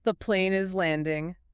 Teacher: Your voice starts relatively high and drops steadily at the end of the sentence, exactly like a plane coming in for a smooth landing on a runway. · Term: falling intonation